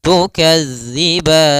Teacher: Maka latihannya agar tidak terbaca dengan huruf zai, itu ujung lidah kita menempel dengan gigi seri atas sehingga terdengar dengan sempurna untuk makhraj daripada makhraj huruf zal. Kemudian pada lafal ban, di sini ada bacaan mad arid disukun, yaitu mad yang kita baca di akhir bacaan kita apabila ada, yaitu sukun yang dia sukun arid.